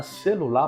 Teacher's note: porque a sílaba tônica da palavra celular é a última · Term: oxítona